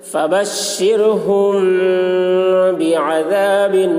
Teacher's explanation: میم ساکن کے بعد با آ رہا ہے اس لیے غنہ کے ساتھ اخفا ہوگا، اس کو اخفاء شفوی کہتے ہیں۔